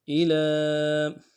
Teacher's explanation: الہ میں حمزہ کو نرم سے ادا کریں گے، لام کے اوپر کھڑا زبر بھی ہے اور مد بھی ہے، کم سے کم 1 الف مقدار میں کھینچیں گے